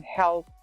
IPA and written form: help (help)